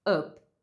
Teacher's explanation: Você não precisa descer tanto a sua mandíbula e fazer um som de a. Vai ser mais um som neutro como up.